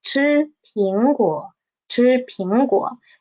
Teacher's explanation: We will just need to pay attention to the disyllabic word, which is 苹果, and we will read the 果, the third tone, into half the tone